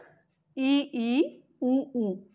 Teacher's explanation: इनको जब बोलते हैं तो जिह्वा का जो भाग है वो बहुत अधिक ऊंचाई पर जाता है, जिससे जो है मुख्य रंध्र बंद हो जाता है। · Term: संवृत स्वर